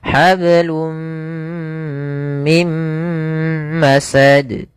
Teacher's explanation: Maka di sini awalnya hablun karena ketemu mim masuk ke mim tanwinnya hilang. Hablum mim masad ya masukkan kedua-duanya dan ditahan. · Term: idgam bighunah, idgham bi gunnah